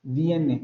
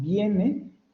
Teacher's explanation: Donde la I aparece ante una vocal o antes de una vocal, se realiza como una semiconsonante. Viene, cuando decimos viene, esa I, que nosotros teóricamente tenemos ahí están representando dos formas.